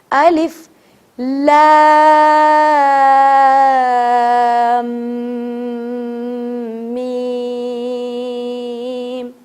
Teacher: لام کو کھینچیں, first thing is that, and other step is لام کو میم سے ملاتے ہوئے 2 سیکنڈ تک غنہ کریں گے